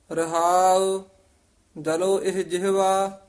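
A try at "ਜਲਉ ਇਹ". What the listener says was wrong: ਜਲੋ ਇਹ ਨਹੀਂ ਕਹਿਣਾ ਇਹਨੂੰ। ਈੜੀ ਲਾਂ ਹਾਹੇ ਲਾਂ ਇਹ। ਈੜੀ ਸਿਆਰੀ ਹਾਹਾ ਇਹ ਇਸ ਤਰ੍ਹਾਂ ਉਚਾਰਨ ਕਰਨਾ।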